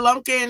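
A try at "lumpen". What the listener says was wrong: Lumpin. There's no K in there. Lumpin. There's no K in there.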